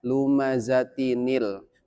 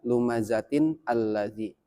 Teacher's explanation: Kenapa? Karena ketika tanwin bertemu dengan alif, lam, maka si tanwin tersebut berubah menjadi nun kasroh. Jadi cara bacanya lumazatinil, bukan lumazatin alladzi. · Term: nun wikoyah